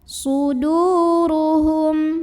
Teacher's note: Maka cara membunyikannya, dal yang dhammah dipanjangkan 2 harokat. Suduruhum, ro-nya dibunyikan secara tafkhim karena ro-nya berbaris di atas. Maka bacanya tebal, pangkal lidah dinaikkan. Suduruhum, hum di sini ada idhar syafawi karena ada mim sukun yang menghadapi huruf selain mim dan ba, yaitu huruf hamzah. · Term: mad tabi'i